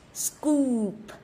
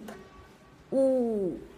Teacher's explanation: Âm u của chúng ta là âm u tròn môi. U và kéo dài đúng không ạ? Scoop. Đọc scoop xong rồi đến âm p bật ra đúng không ạ?